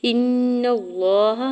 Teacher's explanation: ان اللہ، حمزہ کے ذکر نون مشدد کے ساتھ ملاتے ہوئے غنہ کرنا ہے اور زبر کو لام جلالہ کے ساتھ ملاتے ہوئے پڑھنا ہے، لام جلالہ کے اوپر کھڑی زبر ہے، دو حرکت کھینچ کے ادا کریں گے۔